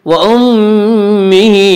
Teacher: میم مشدد غنہ ہوگا، غنہ کی مقدار 1 الف ہے